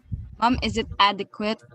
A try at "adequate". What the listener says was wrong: Correct. Adequate.